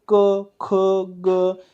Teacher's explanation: हे शब्द उच्चारताना आपल्या जिभेचा मधला भाग हा टाळूला लागतो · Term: कंठ वर्ण